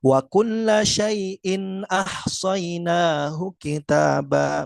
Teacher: tetap nun sukun atau tanwinnya dibaca dengan satu harakat ya, tidak dua atau tiga harakat